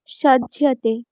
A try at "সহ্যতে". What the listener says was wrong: সজ্জতে নয়, সহ্যতে। য়, জ উচ্চারণ করলে হবে না। য়, সহ্যতে।